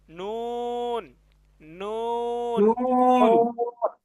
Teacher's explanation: জিহ্বার আগা তার বরাবর উপরের তালুর সঙ্গে লাগাইয়া উচ্চারিত হয় নুন। একবারে সহজ, জিহ্বার আগা তার বরাবর তালুর সঙ্গে লাগান, নুন, নুন, নুন।